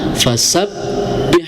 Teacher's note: di lafaz fasabbih ada tasdid ya, harus ditekan